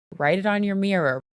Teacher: she pronounces both T's the one in the word write and the one at the end of the word it as flap te's a flap te sounds like a very quick or D in